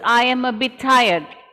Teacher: One ta sound will link the two words.